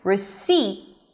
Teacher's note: Now the word receipt has a P in the spelling but there is no P sound. The P is not pronounced. So we begin with re it's an R sound and the E as in sit. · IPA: rɪˈsiːt